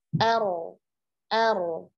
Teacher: ro sukun sebelumnya fathah, kondisinya tafkhim, ya, jadi tebalkan ro-nya.